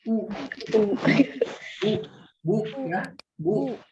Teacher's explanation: ketika membaca huruf ba yang berharokat dhamma, maka otomatis kan posisi bibir kita itu akan monyong. Kalau misalkan kita membaca huruf yang berharokat dhamma, otomatis bibir kita akan monyong ya.